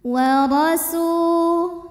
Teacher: Huruf ra dibunyikan secara tafkhim karena berbaris di atas, maka dibacanya tebal.